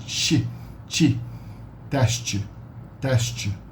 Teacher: the T is pronounced like a wet sound, like a shushing sound.